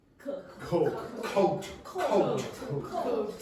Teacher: There's no voicing. There is no voicing. So the vocal cords are not doing this.